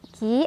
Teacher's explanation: Ki adalah Mad Thobi'i karena ada Ya Sukun sebelumnya ada kasrah di Kaf cara bacanya dibaca panjang dua harakat